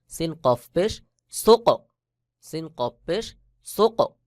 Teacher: কলকলার হরফ কফের উপরে সাকিন এটাকে কলকলা করতে হবে